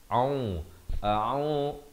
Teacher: Kita lihat isti'azah, lafaznya hamzah di pangkal kerongkong a, ain di pertengahan kerongkong dengan baris dhammah 2 harakat.